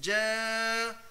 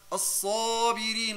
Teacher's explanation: This sound oh. It's ألف مفخمة because the حرف before is heavy